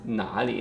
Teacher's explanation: it's gonna turn into a second tone, so it's nali, not third tone here, because it's following by the third tone